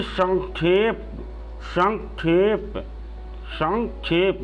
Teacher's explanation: जो संक्षेप बोला जाएगा वहाँ पे अंग का उच्चारण होगा, क्योंकि क्ष जो है बना हुआ है क और मूर्धन्य श से बना हुआ है, तो इसके अनुसार इसका उच्चारण किया जाएगा।